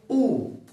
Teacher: आप जैसे उ बोलिएगा आपका होठ हो जाएंगे गोल। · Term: वृत्तमुखी